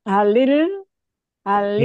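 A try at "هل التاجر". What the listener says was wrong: Nggak ada lilnya karena itu kan syamsiah. Syamsiah itu nggak ada bunyi lilnya. Nah, itu kalau dipisah. Nih, diberitahu dulu ya kalau mau disambung. Halit tajiru gitu.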